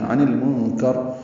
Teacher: نون ساکن پہ اخفا ہے کیونکہ اس کے بعد کاف آ رہا ہے